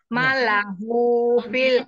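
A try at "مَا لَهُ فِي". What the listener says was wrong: Panjangnya panjang, dua harokat ya. Malahu. Nah, laknya dipanjangkan.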